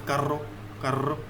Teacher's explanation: This is rolling R. This is not as we do in English or any other European languages.